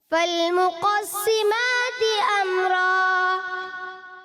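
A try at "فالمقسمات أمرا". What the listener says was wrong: Number تو 10 میں سے 10 ہیں، لیکن ایک اہم بات بھی آپ کے لیے ہے کہ امرا، یہاں را کو آپ نے واضح پر کرنا ہے، امرا فالمقسمات امرا۔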